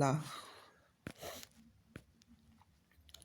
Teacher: जिन व्यंजन के उच्चारण में जीभ श्वास वायु के मार्ग में खड़ी हो जाती है और श्वास वायु उसके बगल से निकल जाती है उसे पार्श्विक व्यंजन कहते हैं।